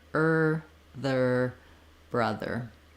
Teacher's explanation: start with your ER sound with your back tongue ER and then sneak your tongue forward for your th